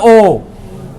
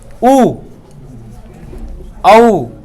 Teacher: ओ बोलने से होठ क्या हो रहे हैं? एक तुम्हें महसूस हो रहा होगा कि गोल शेप में हो रहे हैं। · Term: वृत्ताकार